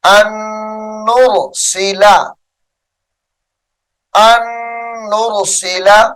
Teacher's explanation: غنہ ہوگا اور اس نون کو بھی چھوڑ دیا جائے گا